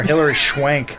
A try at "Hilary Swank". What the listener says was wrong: Why'd you say schwank? Swank. Swank.